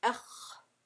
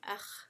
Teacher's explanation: If the back of the tongue is lifting, it's Istitala'a